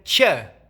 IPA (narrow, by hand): t͡ʃ